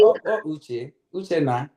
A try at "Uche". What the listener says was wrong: Ucha. UCHA, not UCHE.